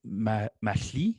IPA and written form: maɬi (Marie)